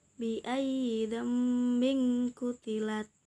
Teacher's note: Di situ ada nun sukun bertemu dengan huruf ba. Nun sukun tersebut diubah suaranya menjadi mim sukun, kemudian disembunyikan pada huruf ba. Cara membacanya yaitu mendengung. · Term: hukum iqlab, iqlab